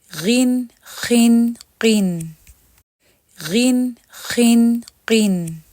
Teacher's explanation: غین، خا اور قاف تو ہمارے تھوڑے کم مفخم ہوتے ہیں بنسبت صاد، ضاد، طا اور ظا کے مقابلے میں